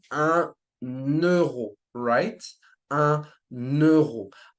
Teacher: I would stress the N, right? And it's like it's linking basically the number with euro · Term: liaison